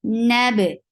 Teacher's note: Noon is light. Ba is light. Don't make anything heavy, but ba has qalqala.